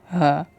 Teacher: ये जो होता है कंठ से और तालु से बोला जाता है। ह बोल के देखिए, ह।